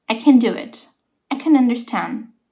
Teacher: when you say can as in the ability to do something you're saying yes it does not take the stress you say it simply like c c a short sound I